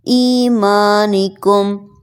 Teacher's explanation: ایمانکم. اس میم ساکن کے بعد نہ با ہے نہ میم ہے تو ہم یہاں پر غنہ نہیں کریں گے